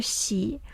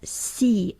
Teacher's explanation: xi is produced as si almost categorically before unrounded vowels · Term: fronting of palatal initials